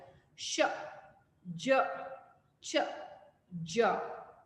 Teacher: Palato-alveolar, produced by the blade of the tongue and the back part of alveolar ridge